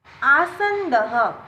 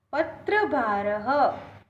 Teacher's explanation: The last vowel is a. All these words end with the vowel a. So the visarg is pronounced as ha.